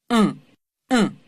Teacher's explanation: dans le son un, on sent aussi qu'il se passe quelque chose dans le fond de la cavité buccale pour dévier l'air vers le nez